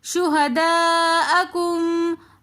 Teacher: شہداء کے اندر مدہ متصل ہو رہی ہے تو اس لیے ہم اس کو 3 الف کی مقدار کھینچ کر پڑھیں گے